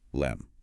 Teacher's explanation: in lemme, the tongue doesn't bother to finish that full explosion of air before it moves into the M sound of me. It becomes one continuous, smooth movement, lem.